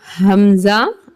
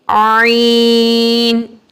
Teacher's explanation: حمزہ تھوڑی سختی کے ساتھ حمزہ، عین نرمی کے ساتھ عین